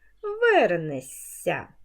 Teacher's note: у дієсловах на шся знак м'якшення не пишемо і вимовляємо ш с як с ся м'який подовжений звук